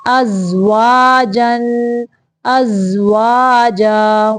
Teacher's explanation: حمزہ زبر زا از، واو زبر الف وا، از وا، جیم دو زبر الف جن، ازواجن، ازواجا۔ واو کی ادائیگی کے وقت دونوں ہونٹوں کو گول رکھنا ہے، دانتوں کا استعمال نہیں کرنا